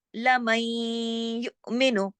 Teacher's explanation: لم نون ساکن کے بعد یا آ گیا، یہاں بھی ادغام ہو رہا ہے